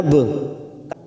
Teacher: Ba sukun qalqalah sugro kita pantulkan nab.